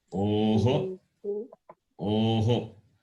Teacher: The visarga takes the sound of the vowel.